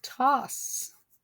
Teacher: it says ah not o so it's short